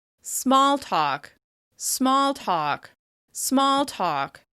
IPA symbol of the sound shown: ɔ